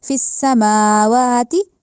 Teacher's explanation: میم کے اوپر بھی کھڑی زبر دیکھی، واؤ کے اوپر بھی کھڑی زبر دیکھی، تو ہم نے ان کو لمبا کرنا ہے۔ فی السماوا نہیں کہنا، فی السماواتی، یا سماوا بھی نہیں کہنا، سماوا دونوں کو لمبا کرنا ہے کیونکہ دونوں پہ کھڑی زبر آ رہی ہے۔